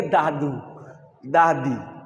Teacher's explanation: জিভের ডগা উপরের দাঁতের গোড়া, ওইখান থেকে